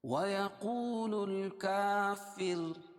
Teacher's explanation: وقف کی صورت میں را کو باریک پڑھیں گے